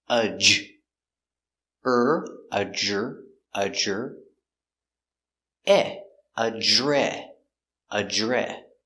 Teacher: DR together make the sound J